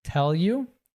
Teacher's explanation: the you reduces and links to tell